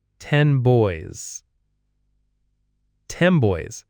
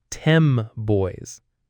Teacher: Because the B in boys is a bilabial sound, meaning you make it with both lips. The M sound is also bilabial, so your mouth is getting ready for the B sound early and it changes the N to an M because it's easier and faster. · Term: assimilation